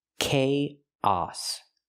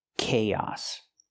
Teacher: We link the two vowels with the y sound like yes and yesterday.